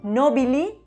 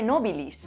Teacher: inscripciones por ejemplo se ha encontrado nobili en lugar de nobilis aquí vemos la pérdida de consonantes finales